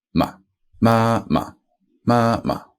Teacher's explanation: If what precedes the fifth tone is high, like the first tone, for example, then fifth tone will be lower.